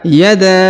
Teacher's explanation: huruf Da dipanjangkan Lima harakat karena memiliki tanda panjang